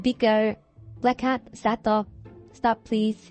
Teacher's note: there is one prolonged closure for the two stops in question. 두 개의 스탑이 좀 더 길게 나는 고루한 막힘이 일어난다라고 하는 거예요.